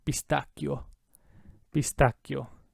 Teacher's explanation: Double C, hold it out twice as long. The H is there, so it keeps the hard cut sound.